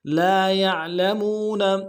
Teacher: لام کے ساتھ الف مدہ ہے، ایک مقدار میں کھینچیں گے، یا کو عین کے ساتھ ملانا ہے، عین کو موٹا ادا کریں گے ، لام کو لم سے ادا کریں گے، میم کو واو